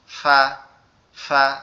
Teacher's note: নিচের ঠোঁটের সাথে উপরের দুই দাঁত হালকা করে লাগবে, লেগে ফা। ফা।